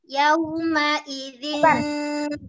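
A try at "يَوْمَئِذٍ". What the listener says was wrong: Yawma. Bukan yawma. Apakah betul? Enggak. Harus langsung. Yawma.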